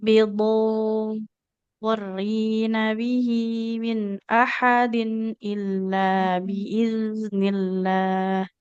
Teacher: Huruf dotnya kurang panjang ya. Huruf dotnya 6 harokat.